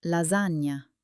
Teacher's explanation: It's a nasal n similar to the ni in canyon.